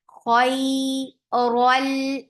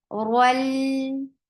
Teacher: Roll is heavy because there is fatha on it.